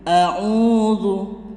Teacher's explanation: Di sini adalah mat tabi'i, panjangnya itu 2 ketukan. Qul a'udzu, jangan sampai membaca Qul a'udzu kepanjangan, tapi a'udzu 2 hitungan.